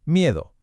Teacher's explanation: O en miedo, donde la I se pega a la E.